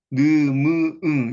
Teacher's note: 비강, 콧구멍으로 통하는 이제 통로가 열린 상태에 내는 소리죠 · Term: 콧소리